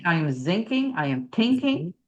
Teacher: You're going to substitute because thinking is unvoiced. So, you're going to probably substitute a t sound or an s.